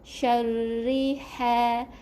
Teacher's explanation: ra baca dengan nipis semua ra ni adalah ra baris bawah, jadi kena nipiskan